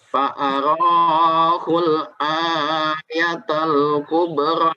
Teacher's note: Ini bisa dilihat di sini ada hamzah ya. Kalau hamzahnya itu di tengah seperti ini, maka dia panjang 2 harokat. Posisinya dia dipanjang di tengah.